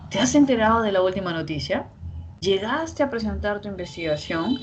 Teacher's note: hay una curva melódica que sube y esta curva melódica que sube nos da un tono ascendente